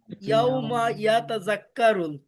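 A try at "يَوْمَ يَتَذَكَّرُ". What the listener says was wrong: ইয়াউমা ইয়াতা যেরকম সুন্দর করে পড়ছেন, জাক্কারুলটা এভাবে সুন্দর করে বলেন, তাহলে তো হয়ে যায়। হ্যাঁ এই যে আপনারটা ঠিক আছে, সুন্দর হয়েছে, শুধু জালটাকে যা যা বলে ফেলছেন, এটা একটু নরম করতে হবে ভাই। জিপার আগে একটু কামড় দেন, আমার জিপে এই জিপে দেখা যাবে এরকম, রাক্কারুল, রাক্কারুল,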